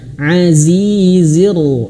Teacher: Huruf ro ini dia bertasydid dan dia berharokat fathah, maka dia baca tebal tafkhim.